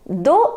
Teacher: We don't pronounce the last consonant. So it becomes do.